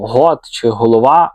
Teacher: А от твердий, різкий, проривний звук «г», як у слові там «гот» чи «голова», масово закріпився саме на північному сході.